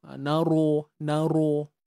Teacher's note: Ra baris atas ni kena baca tebal tapi jangan muncung macam mana nak nak dapatkan sifat tebal tu kena angkat pangkal